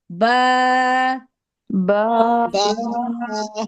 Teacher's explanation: बा जो है बंद होठों के गीले हिस्से से लगा के पढ़ा जाता है। जब आप होठ बंद करेंगे तो आपको लगेगा आपका ऊपर का गीला हिस्सा होठों का और नीचे का गीला हिस्सा दोनों मिल रहे हैं आपस में।